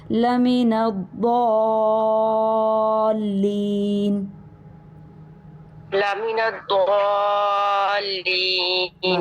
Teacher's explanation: الف سے پہلے ضاد ہے. ضاد کی وجہ سے الف بھی پر ہو جائے گا اور مد بھی پر ہو جائے گی · دوبارہ سے جس مد کے بعد شد ہوتی ہے وہ مد سب سے زیادہ لمبی ہوتی ہے تو لمبا کیجئے تھوڑا سا اور موٹا کیجئے کیونکہ ضاد کے بعد الف ہے. الف ہمیشہ ماقبل کے تابع ہوتا ہے.